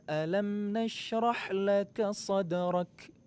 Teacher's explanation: Jadi huruf kaf itu masuk ke dalam kategori huruf yang mempunyai sifat hamas, mengalirkan udara atau berdesis. Cuma huruf kaf dan juga ta, sifat hamasnya itu tidak terlalu kuat seperti huruf-huruf hamas yang lainnya.